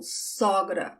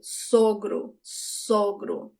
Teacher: I wonder if you can notice that só is the open sound of the O, sogra. But for father-in-law is the closed sound of the first O